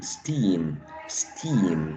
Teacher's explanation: With a long, spread, unrounded E.